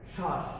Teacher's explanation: এই শ্বাস শব্দটিতে আমরা ব ফলার উচ্চারণ করছি না